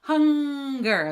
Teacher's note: the back of your tongue is touching the back of your throat